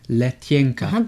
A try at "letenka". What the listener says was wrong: But the first one is not softened.